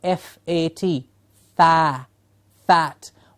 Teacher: Of course, the jaw is dropping and the tongue is going down, fat. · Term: Tongue vowels